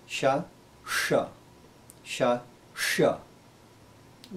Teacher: make this differentiation too clearly telugu speakers may need to learn the sound is cerebral it's a little bit harder heavier sounding than shiva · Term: cerebral sha